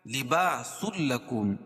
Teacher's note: اس لیے کہ تنوین کے بعد ادغام بلا غنہ کے دو حرف لام اور را میں سے لام ہے، تو ادغام تو کریں گے لیکن غنہ نہیں کریں گے